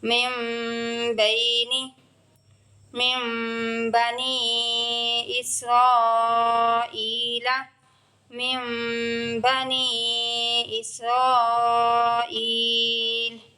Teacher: نون ساکن کے بعد حرف با آ رہا ہے ساری جگہ اور نون ساکن کی آواز کو میم میں بدل کے اخفا کر رہے ہیں